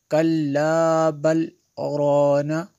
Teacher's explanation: یہاں پہ سکتہ ہے، تھوڑی دیر کے لیے آواز رک جائے گی، سانس نہیں ٹوٹے گی۔